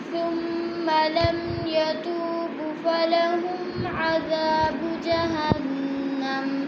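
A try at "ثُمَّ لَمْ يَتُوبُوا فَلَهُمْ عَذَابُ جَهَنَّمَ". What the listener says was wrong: यतूबू को खींच कर पढ़ना है, वो मद्दा। जहन्नमा करके वक़फ़ नहीं करते, वक़फ़ की सूरत में मीम साकिन कर देंगे। जहन्नम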